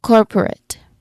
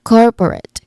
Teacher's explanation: So we say it as corporate. Cor is the stressed syllable